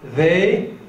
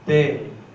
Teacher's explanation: The first one is a fricative and the second one is a plosive.